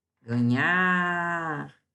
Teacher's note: Sílaba tônica é a última. Então, é uma palavra oxítona.